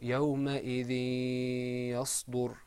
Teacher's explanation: we don't pronounce the noon sound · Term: Idgham